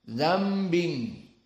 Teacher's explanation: Nun berubah menjadi mim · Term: iqlab